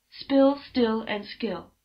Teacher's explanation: there's no puff of air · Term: unvoiced unaspirated consonants